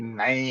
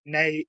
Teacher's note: there's a glottal stop in the middle of it